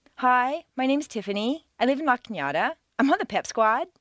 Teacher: Not every American uses the downward staircase. A certain segment of the population uses rising staircases, generally teenagers on their way to the shopping mall.